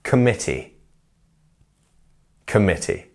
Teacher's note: our mit part of the word is our stressed part. So committee, not committee.